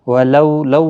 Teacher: واولین ہے، تھوڑا نرمی کے ساتھ آدھے الف کی مقدار کے برابر کھینچ کر پڑھیں گے۔